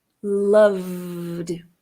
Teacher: Cuidado para não fazer uma vogal entre o V e o D. Passa direto do V para o D. Loved. E para a palavra cough, o último som é o som do F.